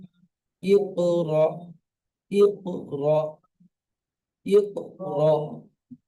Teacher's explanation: সাকিন ওয়ালা হামজা ধাক্কা দিয়ে বা ঝটকা দিয়ে উচ্চারণ হয়।